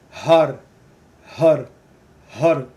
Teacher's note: The mantra is Har. And there's a rolling of the tongue. So when you make that R sound, the tongue, but just slight, just to get that tongue on the roof of the mouth, because ha.